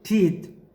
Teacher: or steady state vowels for example when you say teeth then while you are creating the sound of the e nothing changes in our mouth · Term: monophthong